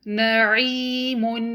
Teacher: اس word میں واو مد ہے، نون کو ہم 2 کاؤنٹ پڑھیں گے، ہا کو مخرج سے نکالیے، نوح۔ اس ورڈ میں یا مد ہے تو ہم عین کو 2 کاؤنٹ لمبا پڑھیں گے، عین کو مخرج سے نکالیے، نعیم۔